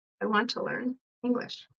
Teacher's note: So I want to learn English or to learn with a schwa sound.